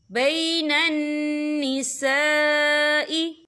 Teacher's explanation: ये मद जो है मद मुत्तसिल है, इसकी मिकदार 4 हरकत के बराबर है, तो हम इसे 4 हरकत के बराबर खींच के पढ़ेंगे।